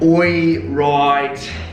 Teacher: Right. So you don't say I with this diphthong, you say something between I and oi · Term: the oi sound